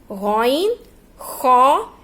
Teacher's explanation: غین خا یہ حلق کے اوپر والے حصے سے نکلتے ہیں